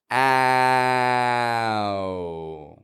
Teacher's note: bring the corners of the lips in and get ow fading and quick with the w glide on the end